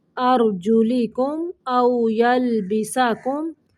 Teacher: یہاں پہ میم کو ظاہر کرنا ہے جہاں پہ بھی میم ساکن ہے